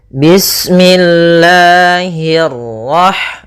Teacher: Allah itu ada mad thabi'i pada lafal lanya. Nah, di sini kita panjangkan dua harakat. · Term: mad tabi'i